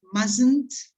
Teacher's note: t is silent okay you write it but you don't pronounce it